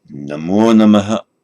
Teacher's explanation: In modern India, if it appears at the end on its own, or at the end of a sentence, end of a verse, end of a word group, it's pronounced Namaha. So with this echo of a vowel, Om Namaha, and you say Namo Namaha, making an extra syllable of it. Not Namah, 2 syllables, but Namaha, which is heard distinctly as 3 syllables, listening to a modern Indian pronouncing it.